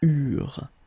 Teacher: when we've got this ENT ending at the end of the plural form, so third person of the plural, you don't pronounce it, so you get eurent.